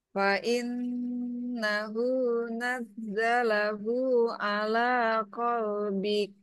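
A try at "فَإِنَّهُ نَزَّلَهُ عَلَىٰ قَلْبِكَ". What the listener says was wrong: Nah, nunnya sepertinya kurang tahan, Bu. Fa'in.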